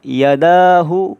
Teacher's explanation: وقف کی حالت میں تھوڑی ہا ظاہر کر کے پڑھیں، منہ سے ہوا نکالیں